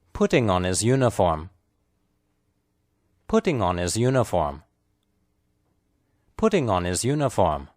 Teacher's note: In this phrase, putting and uniform are clearly stressed. The words on and his are unstressed, spoken lightly and quickly.